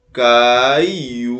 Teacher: Bocaiuva é uma palavra paroxítona é a penúltima sílaba mais forte